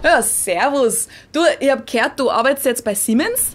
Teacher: People who speak Bavarian dialect, for example, would say Siemens with a voiceless S, just like people do in English.